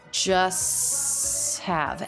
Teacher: the St consonant cluster when this is followed by a consonant it's the most common pronunciation by far to drop the T